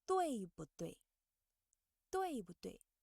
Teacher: when 不 is in the middle of a word, it should be pronounced in a soft tone. We should read it briefly and lightly, like first, 对不对？对不对？